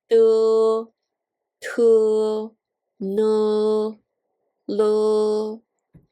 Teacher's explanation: The second groups are the alveolars, 舌尖中音, de, te, ne, le.